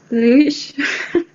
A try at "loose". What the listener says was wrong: No, not what you're saying is loosh. You're saying loosh. Yeah. It's not loosh. It's not an sh. It's a s. Loose. Yeah, loose. Yeah, exactly. Loose. Have you heard of a noose in the cowboys and Indians? If they were going to hang somebody, they would hang them by a noose around their neck. It's spelled the same, except it's got an N on the front.